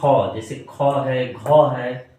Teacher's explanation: महाप्राण होते हैं इनके उच्चारण में मुख से अधिक स्वास निकलती है